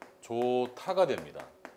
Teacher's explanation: 좋다라는 말 좋다가 됩니다. 좋다는 히읗이 디귿을 만나서 티읕으로 바뀌었죠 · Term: 축약